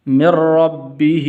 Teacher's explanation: ہا کے نیچے کھڑی زیر ہے تو اس لیے اس کو ایک الف کے برابر لمبا کرتے ہیں، کھڑی زبر ہو یا کھڑی زیر یا الٹا پیش تو اس کو ایک الف کے برابر لمبا کرنا ہے۔